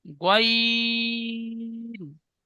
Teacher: গয়িন অক্ষরটি 3 আলিফ টান দিয়ে পড়তে হয়